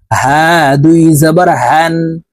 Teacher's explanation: হলকের শুরু থেকে এই হার উচ্চারণ করতে হবে, এটি ছোট হা।